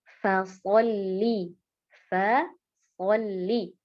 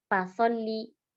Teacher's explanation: huruf fa ini makhrajnya dari bibir bawah bagian dalam bertemu dengan ujung gigi seri atas. Nah, kesalahan biasanya seseorang mengucapkannya dengan menggabungkan ya, menggabungkan kedua bibirnya.